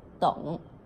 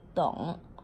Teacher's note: ông á không có được đóng miệng lại nha